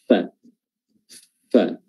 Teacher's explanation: Ini bibir bawah bertemu dengan ujung gigi seri atas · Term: makhraj huruf fa